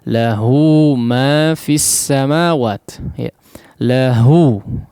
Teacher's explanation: maka huruf ha dhamir tersebut dibaca sepanjang dua harakat ya